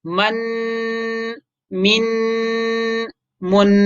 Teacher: इसको जो हम नाक में आवाज़ ले जाते हैं, इसको गुन्ना कहते हैं, गुन्ना। यानी आवाज़ को नाक में ले जाना।